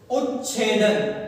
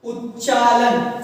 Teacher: વ્યંજન બેવડાય છે. બેવડાય એટલે કે બે વાર બોલાય છે. આપણે ઉદાહરણ દ્વારા સમજીએ કે ત છે પહેલા શબ્દનો છેલ્લો વર્ણ અને તેના પછી ત કે ચ હોવો જોઈએ.